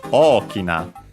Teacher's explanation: It becomes accented on the O, on the first O, so Okina, high and everything else low.